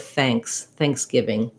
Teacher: the ng is formed more in the middle back of the mouth and so it kind of pulls the a sound up · The NG, I form that, if this is the front of the mouth, the NG is formed more in the middle back of the mouth. And so it kind of pulls the sound up. So rather than, I can't really say thanks because I have to be ready to close off and seal off in the back of my mouth for that NG sound.